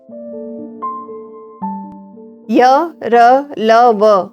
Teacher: यह स्वर और व्यंजन के बीच उच्चारित होते हैं और यह स्पर्श हीन व्यंजन भी कहलाते हैं नेक्स्ट है स्पर्श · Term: अंतस्थ व्यंजन